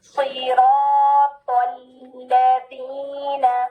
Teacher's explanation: پہلے لام ساکن ادا کریں, پھر لام حرکت کے ساتھ